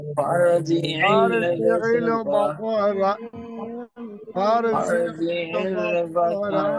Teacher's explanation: র সেকেন্ড তার ডাইনে জবর মোটা আওয়াজে পড়তে হবে